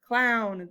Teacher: i have an o w ow sound it's a diphthong when it makes the owl sound cl clown this is a